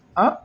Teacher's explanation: आ, मुंह पूरा खुला है आ बोलने में, तो यह जो है आवृत्तमुखी, इसमें ओष्ठ जो है वह वृत्ताकार नहीं हो रहा है।